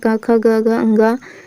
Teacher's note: फिर देखिए, उच्चारण स्थान की दृष्टि से क वर्ग के सभी वर्ण क्या कहलाते हैं। क वर्ग के जो सभी वर्ण हैं वो क्या कहलाते हैं, कंठ्य कहलाते हैं।